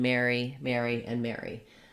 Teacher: all three of these are the same and you use the air diphthong in these words · for me i say the word mary as in to marry someone and the name mary and the other word mary as in merry christmas all with the same pronunciation